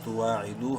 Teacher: واو مدہ ہے، دال کو ایک الف کے برابر لمبا کریں گے